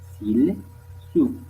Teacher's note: Les zones S, constrictive, fricative, prédorso-alvéolaire.